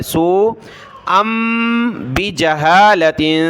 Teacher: سین کو کھینچا مد کی وجہ سے اور حمزہ کو میم کے ساتھ ملایا کیونکہ تنوین کے بعد با ہے